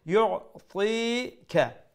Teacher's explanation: ইউতিকা, ইউ make ain middle of the throat. Ti, ta is full mouth letter, and after that is ya madda, so the kasra, the zir beneath the ta is going to be stretched one alif long